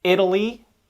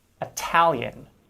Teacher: italy with a tap sound because it's unstressed whereas italian with a true t sound because it is stressed